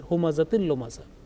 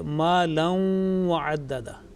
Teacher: So this is something, we can make a difference between two types of idgham. One is without nasal sound and the second one with long nasal sound.